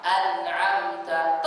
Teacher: Tingkatan ini ada pada nun dan mim sukun yang bersifat ilham. An'amta tetap ada gunnah, tapi tidak dipanjangkan gunnahnya. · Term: gunnah yang kurang